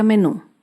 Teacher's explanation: Menú se acentúa en la última sílaba. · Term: palabras agudas